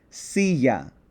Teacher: So, I would pronounce this silla, not silla, silla. So, the accent, that emphasis, falls on the second to last syllable. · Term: natural accent